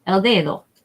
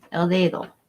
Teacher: you want to make that D nice and soft sounding El dedo the accent goes or the emphasis goes on this